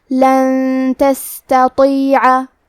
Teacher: پھر حرف تا ہے کلمت تستطیع. تا حروف الاخفاء میں سے ہے تو ہم یہ حکم کو غنہ کے ساتھ ادا کریں گے